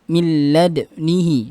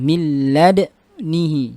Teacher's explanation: Syu'bah membacanya milladnihi dengan ismam di dalnya, milladnihi. Jadi ada diismamkan dulu, dimonyongkan dulu bibirnya.